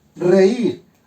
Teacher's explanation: me doy cuenta que la I es tónica y por lo tanto, formo un hiato.